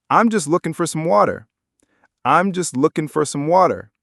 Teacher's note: I'm just looking for some water." Did you catch all the American sounds in there? The G in looking is dropped, for becomes fur, some becomes some, and of course, the flap T in water